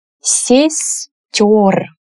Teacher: Here the emphasis stays on the ending, that is why it's ё, not е. Ё is always emphasized in Russian.